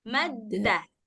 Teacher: Dalnya letaknya di ujung, ya kan? Ujung lidah ketemu dengan dua gigi seri, tapi bagian belakang.